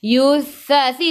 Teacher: Yuthathi tu hujung lidah keluar pada gigi depan